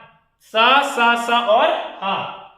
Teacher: उच्चारण रगड़ या घर्षण से उत्पन्न गर्म वायु से हो उसे क्या कहेंगे? ऊष्म व्यंजन कहेंगे